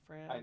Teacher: when you say France, I don't think your tongue actually touches anything when you say the N